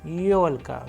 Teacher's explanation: where you can see the stress is on yo because it is also a vowel